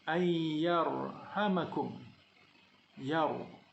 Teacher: Dan di sini ra tidak berbaris, menerima tanda mati tebal kerana sebelumnya ada huruf ya yang berbaris atas.